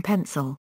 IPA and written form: ˈpʰɛnsəl (pencil)